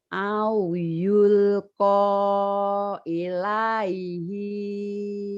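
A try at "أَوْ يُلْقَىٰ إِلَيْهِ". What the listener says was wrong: Inya pendek. Ilaihi kanzun.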